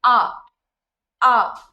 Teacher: अभी आप प्रोनाउंस करिए आ, आ। जब आप आ प्रोड्यूस करते हो तो हवा सीधी लंग से एटमॉस्फेयर में चली जाती है, कहीं पे भी कोई रुकावट नहीं है। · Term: वाउल्स